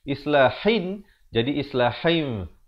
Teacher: Maksudnya kita menukarkan daripada bunyi nun kepada bunyi mim. Asalnya hin. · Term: iqlab